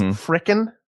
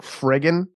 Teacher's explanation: You can't even have a plosive K in there. You have to phonate.